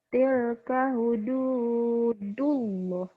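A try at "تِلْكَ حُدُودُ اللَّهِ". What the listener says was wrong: Tapi Allahnya panjang ini ya, O-nya double nih. Gitu ya. Tilka hududullah. Nah, kamu orang Bengkulu harus melatih itu tuh.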